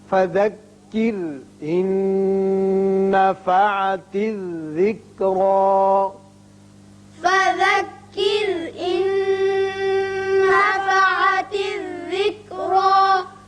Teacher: نون ساکن کے بعد آگے پھر نون آ گیا، یہاں ادغام غننے کے ساتھ ہوگا، ذکرا میں را پر ہوگا.